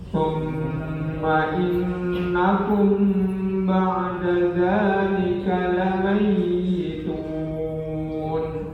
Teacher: ada dua huruf guna, yakni mim yang bertasdid dan nun yang bertasdid berjajar